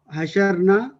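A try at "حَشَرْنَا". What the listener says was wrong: जबरदस्त जबरदस्त।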